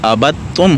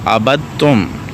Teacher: دال کو تا میں ملا دیا گیا ہے۔ اب یہاں پہ با زبر تا بت ہو جائے گا، تا پہ میم تم ہو جائے گا، تو یہ ابتم ہو جائے گا، ابتم، ٹھیک ہے، کیونکہ دال کو تا میں ملایا گیا ہے اور اسی کو مدغم کہتے ہیں۔